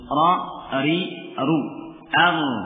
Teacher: Ini ra pada fathah dan dhammah dengan tafkhim.